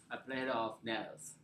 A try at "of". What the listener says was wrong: Okay, don't say of. Say make very short. This one, short. This has to be a schwa sound, okay?